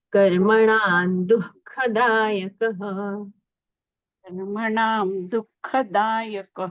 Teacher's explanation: कर्मणा दुख और यह जो है बीच में चिन्ह जो है क और ख इसके पहले जो विसर्ग होता है उसका अर्ध उच्चारण किया जाता है। इसलिए दुखदायक ऐसा उच्चारण होगा।